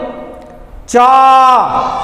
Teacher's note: तो च बोल रहे हैं तो कहा जीभ जो है वो हमारे तालू में पहुंच रही है